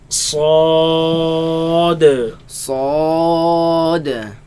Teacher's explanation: Back of the tongue is raised.